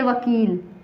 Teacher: दंत और ओष्ठ के संयोग से व बोला जाता है। व से वकील।